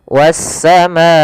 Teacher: pada lafal wassama di sini ada alif lam syamsiah kembali yaitu alif lam yang ditulis tapi tidak terbaca lamnya sehingga langsung ke huruf Sin yang berharakat tasdid wassamaa di sini pada lafal Maa ada hukum taujid berupa mad